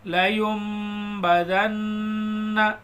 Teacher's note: جب بھی نون ساکن کے بعد با آئے گا تو نون کو میم سے بدل کر غنہ کے ساتھ پڑھیں گے۔